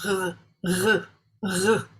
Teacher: Okay, next we have the resh, sound of the R as in English pronounced by the Scottish people. The tongue is curved back just behind the alveolar ridge.